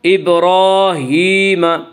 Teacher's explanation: یا مدہ وہ یا جو ساکن ہو اور اس سے پہلے زیر ہو، یا مدہ کو 1 الف کے برابر کھینچ کر پڑھیں گے